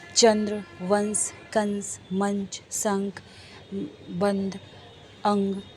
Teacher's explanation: इन वर्णों का उच्चारण करते समय वायु नाक से बाहर निकलती है और इन्हें अधिक जोर से बोला जाता है जैसे फॉर एग्जांपल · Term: अनुस्वार